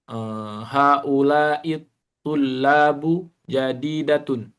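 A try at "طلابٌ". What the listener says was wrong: Tanwin. Tulabun.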